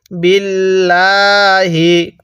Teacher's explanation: যদি আল্লাহ শব্দের এই লামের পূর্বের হরফের নিচে যদি জের থাকে তাহলে এই লামটাকে চিকন করে পড়তে হবে